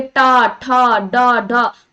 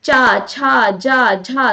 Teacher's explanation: जब जिह्वा पलटकर तालु को स्पर्श करता है तो उसे हम कौन सा वर्ण कहते हैं? मूर्धन्य वर्ण कहते हैं